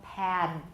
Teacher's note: the voicing only lasts about halfway through a final stop for example pad pattern for the rest of the stop the